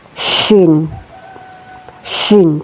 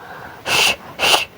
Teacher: keluar dari tengah-tengah lidah ya bersama langit-langit mulut atas atau tengah langit-langit atas. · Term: huruf syin